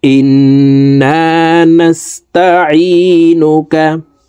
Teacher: গুন্না হরকতের বামে নুনের উপরে তাসদিদ আছে এ কারণে এ হামজা তাসদিদ ওয়ালা নুনের সাথে নাকের বাঁশি থেকে তিন সেকেন্ড পরিমাণ গুন্নাহ করে ধরে রাখবো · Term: ওয়াজিব গুন্নাহ